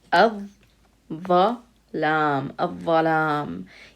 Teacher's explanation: So it would be pronounced with a shadda. That means we would not hear the lam. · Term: shamsi